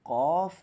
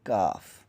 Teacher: قاف وہ موٹا کر کے پڑھا جائے گا، کاف جو ہے یہ باریک کر کے پڑھا جائے گا، دونوں میں یہ ڈفرینٹ ہے.